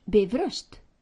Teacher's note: keep the accent on the first syllable as always in Icelandic